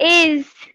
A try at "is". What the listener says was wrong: ইজ, ইজ তুমি একটু লম্বা করে ফেলতেছো, তোমারটা একটু লম্বা হয়ে যাচ্ছে, ইজ হয়ে যায়, ইজ, ইট, এরকম। হ্যাঁ, ইজ।